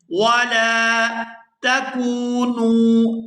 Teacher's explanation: یہاں لام کے ساتھ الف مدہ ہے، اس کو کھینچ کر ادا کریں گے